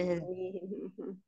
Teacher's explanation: Jangan lupa tarmihim yang panjang mi-nya.